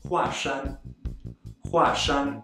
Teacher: when it's used to refer to the mountain, Mount Hua, or used as someone's last name, it is read as a fourth tone